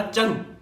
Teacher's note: च है वो तालु का उच्चारण स्थान है, इसका तालु है।